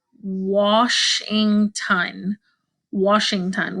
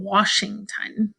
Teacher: We don't hear the a sound, we hear like an ah sound.